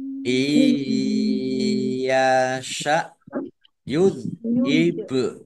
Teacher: nun sukun bertemu dengan huruf ya, ini bacaan idgham bi gunnah, masuk dengan mendengung, yaitu mendengung ya, ya langsung masuk ke huruf ya, ditandai ya-nya dibaca sukun, dibaca mendengung ya ditahan biar tampak dengungannya.